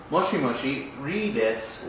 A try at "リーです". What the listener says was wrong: Okay, you said R-I like we would say R-I, but it's almost Leeです. R-I-L-I, particularly problematic when Japanese speak English. Leeです.